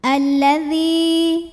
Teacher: Alladzi mad tabi'i karena ada ya sukun yang didahului baris kasrah, maka zal yang kasrah dipanjangkan 2 harokat